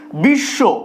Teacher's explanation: তালব্য স ফলা রয়েছে তো সেক্ষেত্রে এই বফলাটাও সয়ে পরিণত হবে